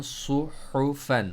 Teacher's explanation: सौत को मोटा पढ़ना है, हु मिडिल थ्रोट से पढ़ना है। सुहुफन, दोनों के ज़रूरी है सही तरह से पढ़ना, स्वाद और हा दोनों के लिए प्रैक्टिस की ज़रूरत होती है।